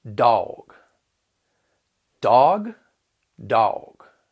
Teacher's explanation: Instead, we're going to have a diphthong that's going to sound more like aw, dog, dog, dog. All right, you can kind of hear it stretching out a little bit with that diphthong